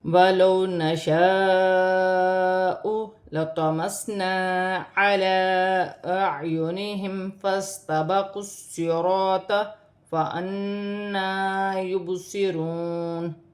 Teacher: الف مدہ پر بڑی مد ہے، مد متصل، اسے 5 الف کی مقدار تک کھینچ کر پڑھا جائے گا · ساکن سے پہلے زبر تو واولین بنے گی، اسے کھینچا نہیں جائے گا